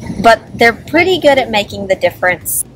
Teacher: how I pronounce pretty like it's spelled with a D instead of a T